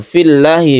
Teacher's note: lamnya dibaca tipis atau tarqiq karena ada kasroh sebelumnya